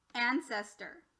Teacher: word ancestor this is what we would call ishwar as well because it went from an o to a slightly e sound like an er sound